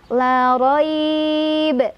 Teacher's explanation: Jadi mad lin kalau berhenti jadi panjang ya. Karena tadi saya berhentinya di fi, maka roi-nya itu huruf lin aja.